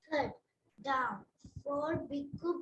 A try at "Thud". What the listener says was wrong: thud should be a little more expressive and louder when you say it. Thud. The people who are hearing should feel that something is falling down. Thud. Say it with a little more of energy.